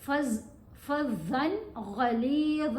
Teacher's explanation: ہے، ہم نے یہاں پر اظہار کرنا ہے، اظہار مطلب جو تنوین جو ہے اس کو کلیئر پڑھا جائے گا، اس کے اوپر غنہ کرنے کی کوشش نہیں کرنی